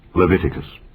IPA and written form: lɪˈvɪtɪkəs (Leviticus)